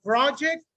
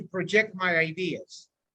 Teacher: if it's a noun the stress is in the first part